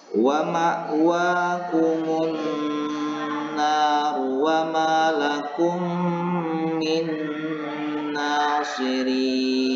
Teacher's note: Kemudian yang kedua ini adalah contoh yang kedua huruf nun, yaitu memasukkan huruf nun yang pertama ini yang berbaris sukun kepada huruf nun yang kedua yang berbaris tasdid dan fathah ini, dan membaca huruf nun yang berbaris tasdid dan fathah ini seolah-olah bertasdid dan disertai dengan dengung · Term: idgham mutamattsilain